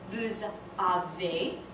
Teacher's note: you pronounce the S in vous like a Z because a vowel follows it.